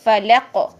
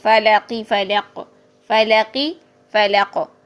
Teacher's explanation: دیکھیں لام موٹا نہیں کرنا، قاف موٹا کرنا ہے